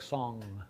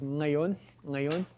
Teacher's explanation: Remember that velar means the place of articulation for a K or a G. So you make a K or a G sound, and then just let air flow through your nose. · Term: velar nasal